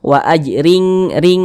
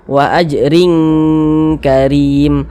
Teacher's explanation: kadar ikhfanya itu dia rendah, jadi dia tuh lebih condong berbunyi eng.